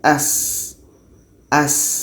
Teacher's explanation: Sin ini letaknya pada ujung lidah menempel dengan bagian atas segigi seri bawah jadi kita baca dengan as as ada suara yang mengalir as